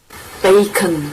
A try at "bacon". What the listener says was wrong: Yeah, that's it. So that long A sound, you need to work on it a little bit.